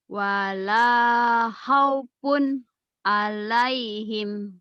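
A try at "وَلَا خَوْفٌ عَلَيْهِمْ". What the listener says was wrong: Ya, kho-nya kho ya jangan hao. Kho, khoir, khoir. Hore jangan ha. Khoi, khoi, khoi. Wala khaufun alaihim.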